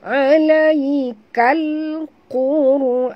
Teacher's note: Ra pula oleh kerana dia mati huruf sebelumnya baris depan, maka dia baca tafkhim, tebal ya.